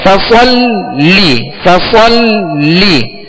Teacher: लाम पर क्या है, तस्दीद है, लिहाजा लाम को दोहरा पढ़ेंगे, 2 मरतबा पढ़ेंगे।